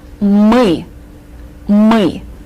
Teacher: the bulk of your tongue goes back in your throat, and you are saying this unusual sound, U, мы, мы.